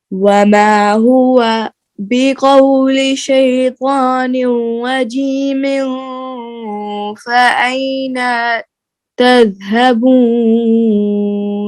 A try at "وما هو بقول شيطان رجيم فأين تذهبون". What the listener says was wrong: نون لمبی ہو گئی. فأين تذهبون.